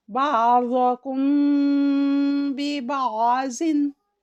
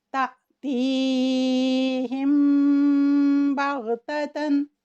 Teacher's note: मीम साकिन के बाद अगर बा मुतहर्रिक आ जाए तो उसमें हम इख़फ़ा करेंगे, यानी कि हम नाक की जड़ की तरफ ले जाते हुए खैशूम से अदा करेंगे और 2 सेकंड का वक्त देंगे। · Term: इख़फ़ाए शफ़वी